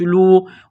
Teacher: واو ساکن سے پہلے یہاں پر پیش ہے، حروف مدہ واو ہے تو ایک الف کے برابر اس کو کھینچنا ہے